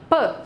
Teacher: não tem vibração de prega vocal na produção desse som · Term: desvozeado